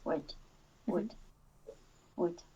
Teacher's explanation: I'm not stressing it, but I'm keeping the word pure and short and flat.